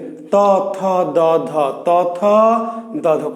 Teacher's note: খুবই সিম্পল, দাঁতে। দাঁতের পিছনে গোড়ায় না, তালুতেও না, ডাইরেক্ট কি এই যে দাঁতে। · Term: দন্ত বর্ণ